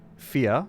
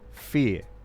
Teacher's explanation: So it's like a, is that called a diphthong, where the vowel changes, fear, right? But then some Australians will say fear, so they don't change the vowel, and that's just like a, yeah.